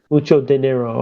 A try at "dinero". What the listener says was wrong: No, roll the R. Dinero.